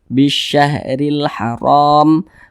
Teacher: huruf Sya maka ini hukumnya adalah alif lam syamsiyah Nah maka huruf lamnya tidak dibaca jadi diidghamkan langsung masuk di huruf yang di depannyaah